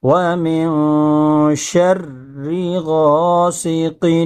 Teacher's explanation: من شر ما خلق ومن شر غاسق اذا وقب، ومن، تھوڑا اخفا رک کر کے کریں گے، ومن شر غاسق، سین کو ایک دم باریک نکالیں، سیٹی کی آواز نکلے گی، اور قاف کو بھی خوب نکالنے کی کوشش کریں۔